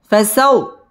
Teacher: ওয়াও তাজদীদ ওয়ালা হরফ ওয়াও ঠোঁট গোল করে উচ্চারণ করতে হবে